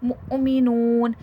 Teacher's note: मुमिनून यहां देखिए हमजा पर जजम है। जब भी हमजा पर जजम आएगा वहां पर हल्का सा झटका दिया जाएगा।